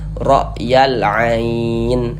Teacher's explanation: Huruf ro memiliki harakat fathah dibaca tabkhim